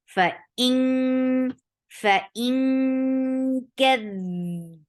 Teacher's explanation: Hamza is very sharp, and don't drop this sharpness until you create ikhfa here. And kaf is light, so ikhfa is light, so you're keeping tongue straight, but it should seem like you are saying ink. So this ikhfa is like ink.